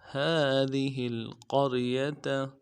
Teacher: ہا کے اوپر کھڑا زبر ہے، ایک الف دال میں کھینچیں گے، ذال کو باریک ادا کریں گے اور ہا کو لام کے ساتھ ملائیں گے۔